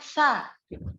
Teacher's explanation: Istifal dan infitah bikin hurufnya tipis. Jadi ketika fathah harus terbuka mulutnya terbaca sa.